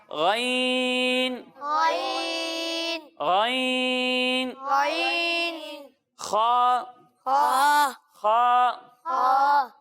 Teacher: تو یہ دو وہ حروف ہیں جو حلق کے اوپر والے حصے سے ادا ہوتے ہیں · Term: حروف حلقی